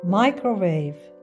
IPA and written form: ˈmaɪ.krə.weɪv (microwave)